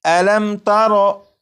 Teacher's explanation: جب میم ساکن کے بعد تا ہے تو اس میم ساکن میں غنہ نہیں کریں گے